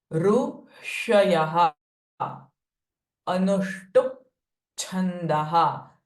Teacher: the hissing sound of sh is coming, but it is different from sh in Shiva. So this is the retroflex sh, like a whistle.